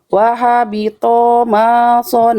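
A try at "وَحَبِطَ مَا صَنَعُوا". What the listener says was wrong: To-nya berapa harokat bunda? Masih kepanjangan ya. Tebal. To-nya tebalkan. Oke, panjang pendek dulu perhatikan.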